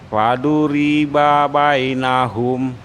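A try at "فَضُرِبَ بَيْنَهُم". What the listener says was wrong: Baik. Sudah Pak, barakallahu fiik. Dilatih terus ya.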